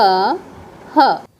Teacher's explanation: ह का उच्चारण स्थान है स्वर यंत्र